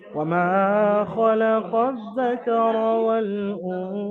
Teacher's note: আলিফের ডান দিকে মিমের উপর জাবার আছে, আলিফ মাদ্দা, মিমকে এক আলিফ পরিমাণ টান দিয়ে পড়তে হবে